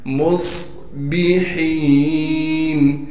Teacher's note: لیے کہ صاد ساکن ہے، با کو بغیر کھینچے پڑھنا ہے، ہا کو صاف کر کے گلے سے نکالیں گے اور ہا کو یا سے ملا دیں گے۔